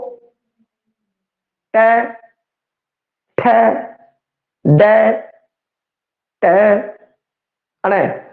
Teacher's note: बई तो वेख्या जाए तै तो तुसी वेख रहे होंगे बई तै मतलब जीभ अजे एवें फोल्ड हो गई है और उतले तालुए नाल एवें टच हो गई है। बई इस तरीके नाल उत्ते तालुए नाल टच है। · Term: उल्ट जीबी